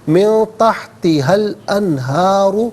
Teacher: را پر پیش را کو پر کر کے پڑھیں گے